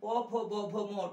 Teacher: প ফ ব ভ ম ঠোঁটে ঠোঁটে ধাক্কা হয়, ওষ্ঠে ওষ্ঠে ধাক্কা হয়, তাই এদের ওষ্ঠবর্ণ বলা হয়। ওষ্ঠ মানে ঠোঁট।